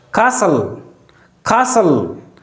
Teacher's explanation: There is a stress or emphasis on the sound ka.